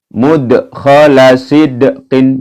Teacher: Mud, ini mantul ya karena dal ini ya, berharokat sukun ya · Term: qalqalah